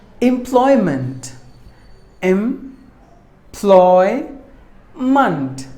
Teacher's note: there are three syllables in this word and we have to stress the second syllable Bly should be given more volume it's a noun employment meaning